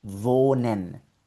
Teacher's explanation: si la H la ves seguida de una consonante, es completamente muda, no suena en absoluto.